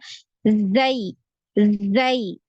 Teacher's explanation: Jadi tajam karena suaranya lewat di cela yang sempit ya